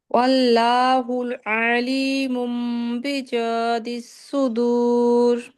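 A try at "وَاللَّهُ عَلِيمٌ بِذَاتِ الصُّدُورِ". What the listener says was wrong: আবার ওয়াল্লাহু হয় না, ওয়াল্লাহু একটু মোটা হবে। ওয়াল্লাহু আলিমুম বিযাতিস সুদূর। ওয়াল্লাহু একদম নরমালি হু হবে। ওয়াল্লাহু আলী আইনটা গলায় হবে। ওয়াল্লাহু আলিমুম বিযাতিস সুদূর। তিস এভাবে সদ উচ্চারণ করতে হবে। তিস সুদূর। তিস সদ, এটা সায়ের উচ্চারণ এসে পড়ে। সদ বলেন তো আপু। জি, এ সদ যে একটা উচ্চারণ করছেন এরকম সটা উচ্চারণ করতে হবে। বিযাতিস সুদূর।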